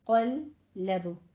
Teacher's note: لام موٹا نہیں کرنا، لام باریک رہنا چاہیے، صرف اس کی تشدید ادا کرنی ہے